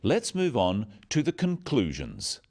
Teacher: Stressing conclusions because it's the key word in this sentence. The other words stressed are the key words for understanding.